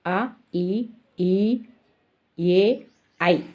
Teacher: పూర్వ స్వరం ఉత్తర స్వరం పూర్వ స్వరం నా లో కొంచెం ముందుకు జరగబడి పెదాలు విస్తరించడం వలన పుట్టే అచ్చులు పూర్వ స్వరాలు